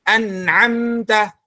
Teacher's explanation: Nun sama mim nanti keluar dari al-khayshum, di rongga hidung, nun dan mim. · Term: huruf nun